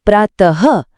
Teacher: जैसे ही आप प्रातःहः बोलते हैं, तो आखिर में जो वो हल्की सी ह की आवाज आती है · जब हम इसे बोलते हैं ना तो गले से बहुत ही हल्की सी श्वास या हवा बाहर निकलती है जो सुनने में एकदम ह अक्षर जैसी लगती है। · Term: विसर्ग